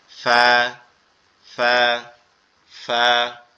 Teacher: আমাদের উপরের দুই দাঁত নিচের ঠোঁটের এই পেট অর্থাৎ এই অংশটার সাথে লাগবে, লেগে উচ্চারিত হবে ফা, ফা, ফা